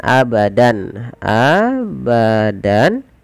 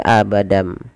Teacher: yang kita kenal dengan istilah iqlab nah iqlab itu membalikkan apa membalikkan suara tanwin atau nun sukun berubah menjadi suara mim